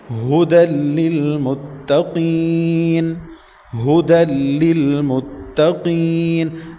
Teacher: ہا حلق کا آخری حصہ جو سینے کی طرف ہے وہاں سے ادا کریں گے